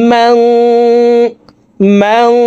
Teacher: ইকফা গুন্না নুন সাকিনের পরে ইকফার হরফ জাল আসছে এই কারণে এই নুন সাকিনকে নাকের ভিতরে লুকাইয়া গুন্নার সহিত পড়ব